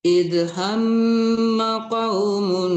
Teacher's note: maka hamnya itu boleh didengungkan dulu, tapi ma-nya jangan tertahan ya